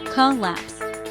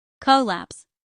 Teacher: It has 2 syllables, collapse. The stress is on the second syllable.